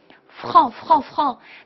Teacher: 是要你充分震动小舌，小舌的擦音